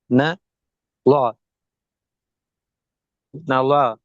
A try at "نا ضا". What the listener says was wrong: லா அல்ல. ந துவா. ந துவா.